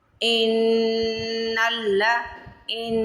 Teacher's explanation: اب یہاں پہ آپ سمپل یہی یاد رکھیں نون کے اوپر شادہ اور میم کے اوپر شادہ آئے گی تو غنہ کرنا. ناک میں آواز لے کے جانی ہے